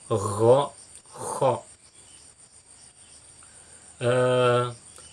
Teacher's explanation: Kemudian aqsal halqi, ghain dan kha, ujung paling luar tenggorokan